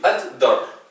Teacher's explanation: Il faut bien qu'on entende deux fois le D